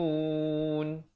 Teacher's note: Izhar syafawi di sini, sempurnakan bunyi hum terus.